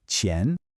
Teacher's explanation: You want to press the flat part of your tongue right behind the tip against the roof of your mouth and release a sharp puff of air. Think of the cha in cheap but with your tongue positioned a bit more forward. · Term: initial Q sound, Q sound